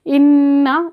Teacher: नून के ऊपर मुशद्दद है यानी कि तशदीद है, मुशद्दद वर्ड है, तो हम इसको गुन्ना करेंगे।